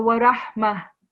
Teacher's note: So it's not hudan wa, it's hudan wa. And then when we're doing a waqf, so it's no longer ta, it turns into ha.